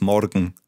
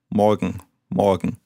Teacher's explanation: in Bavaria you tend to roll the R, so it's morgen.